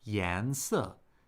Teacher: That's second tone, fourth tone.